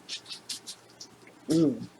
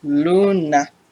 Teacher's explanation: The 5th and last vowel in Spanish is the U, and it sounds like the oo in moon or raccoon, but just a touch shorter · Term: U sound